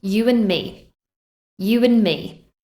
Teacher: We don't say you and me. We drop the d at the end of and. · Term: elision